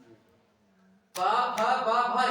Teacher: पा फा बा भा इनका उच्चारण केवल और केवल ओष्ठ से होगा